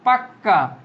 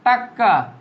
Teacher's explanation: এগুলা কি ব্যঞ্জন বর্ণের ডাবল উচ্চারণ হচ্ছে কি, দুইবার উচ্চারণ হচ্ছে, বলছে দ্বিত্ব বা দুইবার উচ্চারণ হবে, তাকে দ্বিত্ব ব্যঞ্জন বর্ণ বলে।